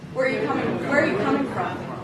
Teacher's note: Whereas in English, I usually drop down at the end when I ask questions where I'm trying to gain more information.